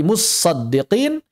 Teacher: Almutasaddiqin t-nya disukunkan masuk ke dalam shad menjadi musaddiqin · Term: idgham